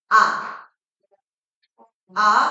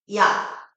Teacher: 아와 다르게 야 이에서 아로 소리가 달라지면서 모양과 혀의 위치가 달라짐을 느낄 수가 있어요. 이게 바로 이중몸 이중몸은 발음할 때 있으면 혀의 혀가 변화하는 놈을 얘기해돼요.